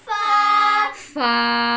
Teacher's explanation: ऊपर सामने वाले दो दांतों के सिरे को नीचे वाले होंठ के अंदरूनी हिस्से से लगाकर अदा होता है